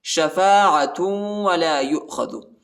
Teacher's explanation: تا کو جو ہے واو کے ساتھ ملانا ہے اور ادھر غنہ بھی کرنا ہے